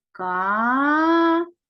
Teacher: наголос падає на другий склад тому саме другий склад буде наголошеним А тепер робимо звукову модель К приголосний твердий позначаємо однією рискою